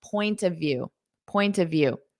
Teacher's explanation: don't forget that of now when I say this as one I'm going to turn that of into an a sound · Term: unstressed, ah sound